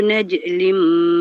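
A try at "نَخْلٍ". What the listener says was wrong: Naj ke kha. Kha tu. Titik dia atas kepala, atas bukan bawah. Bukan dalam perut. Kalau dalam perut dia jadi jim naj. Kha titik dia bukan dalam perut. Atas perut.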